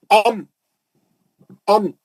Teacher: تو پہلا لفظ با، हम पढ़ लिए, मालूम कर लिए बा जो है शफी है, दोनों होठों के मिलने से निकलता है, ठीक है। उसके बाद मीम अम ये भी दोनों होठों के मिलने से निकलता है